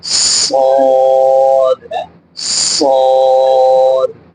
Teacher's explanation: تو صاد کو جب ہم پڑھیں گے تو سختی سے پڑھنا ہے لیکن منہ کو بھر کے پڑھنا ہے، صاد۔ اور یہ حروف صفیریہ یعنی سیٹی والے جو حروف ہیں، سیٹی کی طرح تیز آواز نکلے گی اس میں · صاد کو جب ہم پڑھیں گے تو سختی کے ساتھ تو پڑھنا ہے لیکن موٹا کر کے، یعنی منہ بھر کے پڑھنا ہے، کیونکہ یہ حروف مستعلیہ میں سے ہے۔